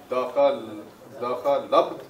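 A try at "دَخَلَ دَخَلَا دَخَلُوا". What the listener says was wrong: ना ना ना, ये लब हो जाएगा फिर, इसलिए आप इसे देखें सिर्फ।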